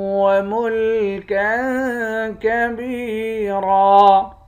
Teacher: کاف دو زبر کن یہاں اخفا کریں گے، با کو یا کے ساتھ ملا کر یا کو ایک الف کی مقدار کھینچیں گے۔